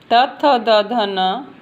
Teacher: त, थ, द, ध, न बोलते समय हमारे जो जीभ है वो हमारे दांतों को स्पर्श करती है, इसलिए इन्हें दंत वर्ण कहते हैं।